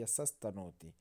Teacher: इसलिए जो अगला सा होगा, जो सा विसर्ग के स्थान पर प्रयुक्त होगा वह भी दंतव्य सा ही होगा।